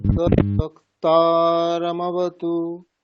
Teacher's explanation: বক্তারম অবতু এরকম নয়, তদ বক্তারমবতু রমবতু এরকম একবারে